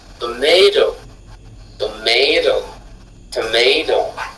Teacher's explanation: Vous voyez qu'on fait, on monte avant de redescendre.